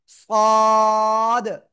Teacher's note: জিহ্বার আগা সামনের নিচে দুই দাঁতের পেট ও আগার সাথে লাগিয়ে একটু মোটা আওয়াজে উচ্চারণ করব